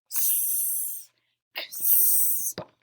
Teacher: It's actually the K and the S together, so it's X.